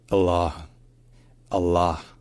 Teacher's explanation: gloss toop and then we have all sound as in Father then we have a very long dark l sound in the middle and then we have a along all sound like in Father